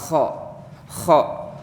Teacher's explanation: Kho itu di sini keluar dari tenggorokan dan menebal. Kho itu ada di tenggorokan bagian tengah. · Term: huruf kho